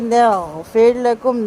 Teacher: غین غرغراہٹ، ہلکی سی آواز غین کی حلق میں ببلنگ ساؤنڈ پیش کرے گی